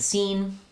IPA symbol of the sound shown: iː